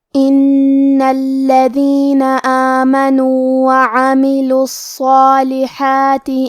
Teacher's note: کلمت ان میں کیونکہ حرف نون پہ تشدید ہے تو ہم یہ حرف کو 2 حرف کے برابر پڑھیں گے کیونکہ تشدید کی اصلیت 2 حرف ہے.